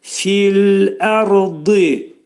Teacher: Dad hərfinin məxrəci dilimiz 2 dişin arasına sol tərəfdən girərək qalın dad hərfini deyirik.